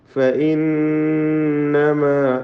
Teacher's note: നൂൻ മുഷദ്ദദ ഷദ്ദ നൽകപ്പെട്ട നൂനാണ്, മണിക്കണം